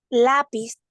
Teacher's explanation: su fuerza verdad está en la penúltima sílaba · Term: palabra grave o lana